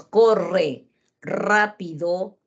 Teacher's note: cuando nosotros decimos corre rápido la lengua vibra mucho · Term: la r